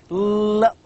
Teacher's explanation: When we say l, there is a blockage of the air, of the tongue. The tongue touches the roof of the mouth, and we can feel that the air passes out of the two sides of the tongue. Now the L sound is called as lateral liquid and formed by letting the air stream flow around the sides of the tongue as the tip of the tongue makes contact with the middle of the alveolar ridge.